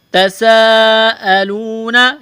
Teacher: تساءلون، یہ لمبی مد ہے، کھینچنا ہے اس کو، تا اور سین، تا کو باریک کرنا ہے، بغیر کھینچ کے پڑھنا ہے، سین میں سیٹی کی آواز پیدا کریں گے